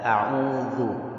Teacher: Yaitu rokhawah. Rokhawah ini suara mengalir. Jadi usahakan suaranya mengalir ketika melafazkan huruf dal.